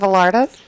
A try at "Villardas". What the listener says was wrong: You don't pronounce the L in Villardas.